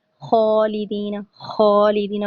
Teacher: یہ تھوڑی سی ہلکی ہلکی سی جیسے خالدین، خالدین پڑھنا، ٹھیک ہے. اس میں ہلکی سی ہم نے خراٹے کی آواز نکالی، پھر خو پڑھا، ٹھیک ہے. اور اس کے اندر ایک اور واضح بات کیا ہے کہ خا اور غین جو دونوں ہم پڑھنے والے ہیں دونوں موٹے ہیں.